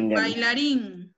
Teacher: diptongo, las vocales van juntas en una misma sílaba